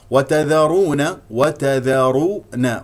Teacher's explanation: الراء مفخمه لانها مضمومه فلا تفخم التاء والذال